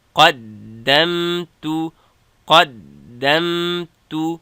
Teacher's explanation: قاف د دال سره، دال د میم سره جنګوم. قاف ډک، دال او میم نرم